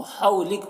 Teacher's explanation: وقف کریں گے تو کاف کا زبر سکون سے بدل جائے گا، تو حولک ہو جائے گا۔